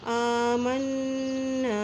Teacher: میم کے اوپر شد ہے اس لیے یہاں غنہ کرتے ہوئے پڑھیں گے